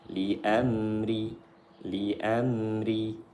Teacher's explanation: Ra-nya dibaca nipis, tipis, terqiq karena berharakat kasrah.